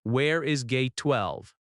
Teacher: rising intonation at the end because it is a question